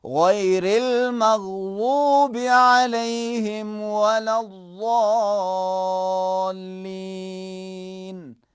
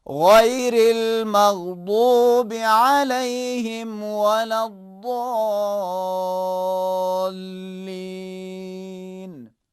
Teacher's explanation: بعض لوگ زوین کے لہجے میں پڑھتے ہیں، بعض لوگ دال کے لہجے میں پڑھتے ہیں